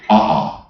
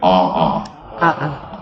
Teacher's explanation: when you have 2 vowels, you put that glottal stop we call an okina